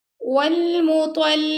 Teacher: قاف کو موٹا پڑھیں گے، قاف پر کھڑا زبر اس کو 2 سیکنڈ تک لمبا کریں گے